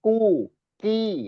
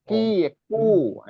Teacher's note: kalau Kaf kalau dia k itu antara langit-langit kering dan langit-langit basah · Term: makhraj huruf Kaf